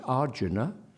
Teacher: whether correctly or not it's Arjuna the stress on the first syllable there